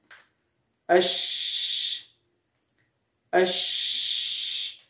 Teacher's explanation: Lalu kita rasakan bahwa ketika kita ucapkan huruf hams tersebut, maka kita akan merasakan adanya aliran suara, aliran nafas yang mengalir deras